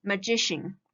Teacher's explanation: the syllable before cian should be stressed. So here we stress here like magician.